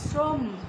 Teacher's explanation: শ্র বলে আমরা যতটুকু টান দিতে পারছি, ম বলে কিন্তু আমরা পাচ্ছি না। শ্রম মানে মটা বদ্ধ, তাই এখানে একটা হসন্ত হবে।